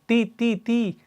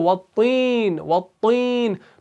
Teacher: تو اس طا کو آپ نے موٹا پڑھنا ہے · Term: مفخم